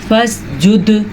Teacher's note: دال جو ہے حروف قلقلہ میں شامل ہے تو یہاں پہ قلقلہ ہوگا